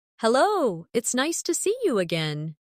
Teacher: see you often sounds like see ya in fast speech.